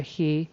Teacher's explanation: I didn't hear a strong W I sort of heard like an h and I didn't hear the CH on the end at all so I sort of heard a he instead of which and